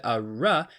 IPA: ɻ